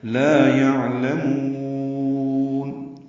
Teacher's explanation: یعلمون میں عین ساکن پہ اظہار ہے، لام باریک ہے، میم کو لمبا کریں گے اور نون ساکن پہ اظہار ہوگا. لا یعلمون، یہ وقفاً لمبا کیا جا رہا ہے، مد عارض للسکون